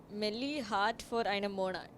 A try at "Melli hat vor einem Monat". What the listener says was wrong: For einem Monat. Why are you swallowing Monat like that? Melli hat vor einem Monat. Yeah, there are 3 accented words. When, with what, where.